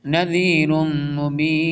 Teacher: ادغام ہوگا، تنوین کے بعد میم آ رہا